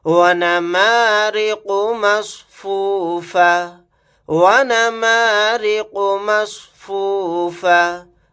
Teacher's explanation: را کو باریک پڑھیں گے کیونکہ را کے نیچے زیر ہے